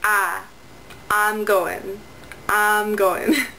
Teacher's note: I don't always say [aɪ] Sometimes I say [a]